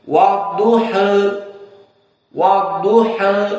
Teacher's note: Maka qiraah Warsh wa Abu Amr bitaklil. Maknanya dicondongkan sedikit ke arah kasroh, tapi sedikit. Menjadi wadduha, wadduha.